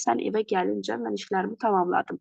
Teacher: bunun hər ikisində vurğu ikinci hecaya düşür